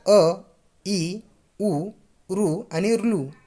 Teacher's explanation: या स्वरांना उच्चार करावयास कमी कालावधी लागतो म्हणून त्यांना काय म्हणतात तर ऱ्हस्व स्वर